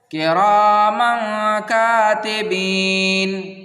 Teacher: اب دیکھیں یہاں پر کرامن کاتبین، تو یہاں پر دیکھیے یہ میم الف 2 زبر من جو ہے یہ تنوین ہے، اور یہ کاف جو ہے یہ حروف اخفا میں سے ہے، اسی لیے یہاں پر ہمیں اخفا کرنا ہے